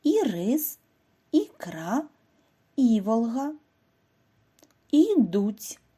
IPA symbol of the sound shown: і